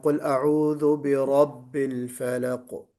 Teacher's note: بے رب میں دیکھیے را پر نہیں ہوا، را کو پر پڑھنا ہے